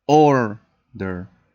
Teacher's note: Even though it finishes in consonant, vowel, consonant, you don't duplicate the letter, because in this case the word order has the emphasis at the beginning. You only duplicate when you finish in a tonic syllable that finishes in consonant, vowel, consonant.